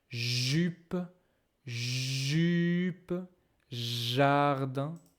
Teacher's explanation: I can feel a vibration in my throat.